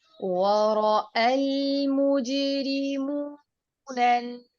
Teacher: रॉ दोनों मुकाम पर पुर होगा, व रॉ के अंदर भी और ना रॉ के अंदर भी, क्योंकि जबर के साथ जब रॉ आए तो रॉ पुर होता है।